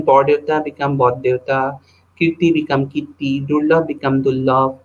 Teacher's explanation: So here you can say the R turns into the stop. In the above instances, rhotic sound R in the coda position of the first syllable gets laminated to the coronal consonants T, D, and L in the onset position of the following syllable. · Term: R assimilation